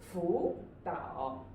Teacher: we will write them in the third tone. But when we read them, we will use the second tone